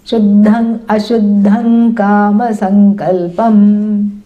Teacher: So the Shuddham, the Anuswara, is followed by Kakara, the guttural. So it takes on the guttural nasal, which is Ang.